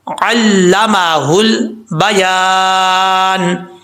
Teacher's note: ہا جو ہے وہ بھاری ساؤنڈ کے ساتھ پڑھا جائے گا، اس کو باریک نہیں پڑھنا، ٹھیک ہے۔ آگے ہے لام ساکن ہے، قلقلے سے بچانا ہے، یا کہ آگے الف ہے، ایک الف کی مقدار لمبا کیا جائے گا۔